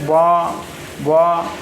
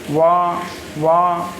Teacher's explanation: तो वा व्यंजन को हम दंत्योष्ठ में रखते हैं, याद रखिएगा। दांत और ओंठ को मिलाकर हम वा का उच्चारण करते हैं।